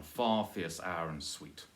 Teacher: You could say one far fierce hour and sweet, but I think its stress falls naturally on far as you go